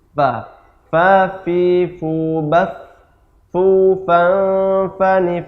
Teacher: Fa, seperti itu. Jadi tidak menyentuh dengan antar 2 bibir. Tapi ujung gigi seri atas dengan perut bibir bawah.